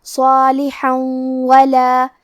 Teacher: کلمت صالحن کے آخری میں حا پہ تنوین زبر ہے، پھر حرف الواو ہے کلمت ولا، یہاں حکم ہے ادغام بغنہ تو ہم یہ حکم کو غنہ اور تشدید کے ساتھ ادا کریں گے